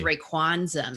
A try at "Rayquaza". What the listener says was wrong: I think you added an N.